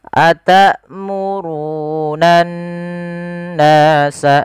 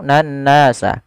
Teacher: Cara membacanya adalah kita menahan suara n-nya sepanjang 2 harakat. Atamurunan nasa, jangan langsung nan nasa. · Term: gunnah